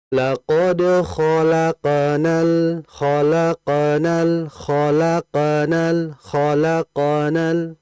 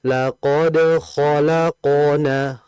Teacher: Di antara yang menjadi kesalahan itu adalah menipiskan qofnya. Memang qof itu betul dia qalqalah memantul. Akan tapi kita juga jangan melupakan jangan melupakan sifat tebalnya.